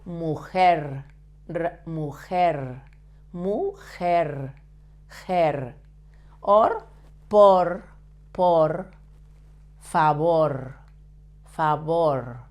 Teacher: you have to vibrate a little bit the tip of your tongue when you pronounce the R. So, the same, tongue back, avoiding to touch your palate or your teeth, but vibrate a little bit, only a little bit, the tip of your tongue.